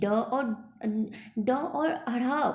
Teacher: पर आप जब इसके नीचे बिंदी लगा देते, यानी कि ड और अढ़ा बोलेंगे, तो जिह्वा झटके से बाहर की तरफ आती है, इसीलिए इसे उत्क्षिप्त कहते हैं